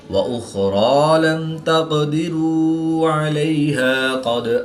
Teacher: قاف اور دال حروف قلقلہ میں سے ہیں، اور جب یہ ساکن ہوں تو ان میں قلقلہ خوب ظاہر ہوگا، اس میں ہم قلقلہ پر کے پڑھیں گے۔